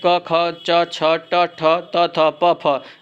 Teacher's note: इन वर्गों के उच्चारण में प्राण वायु में कंपन नहीं होती उन्हें अघोष वर्ण कहते हैं व्यंजन वर्गों के पहले और दूसरे